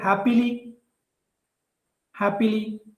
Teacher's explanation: So if we take a word happily, happily, the first syllable is stressed.